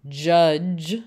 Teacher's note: on is not the vowel it's on that consonant yeah because it became judge where we definitely have that affricate